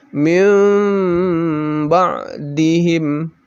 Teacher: nun mati atau sukunya langsung tidak dibaca mint tetapi dibaca mim nun mati atau sukunya langsung menjadi mim mati kemudian didengungkan lalu pembacaan minimnya itu tidak begitu sempurna